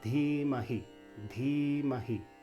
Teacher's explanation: So there's that again, the D with an H is Dha, Dha, Dhimahi. So the Dhi has a long I and Mahi has a short I.